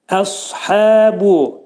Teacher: Dil kökdən yuxarı qaldırılır. Dolu sa deyilir və sadan qabaq ə alaşmaz. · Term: sad hərfinə